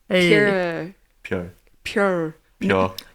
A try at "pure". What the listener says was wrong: don't bring it backward it's not in your throat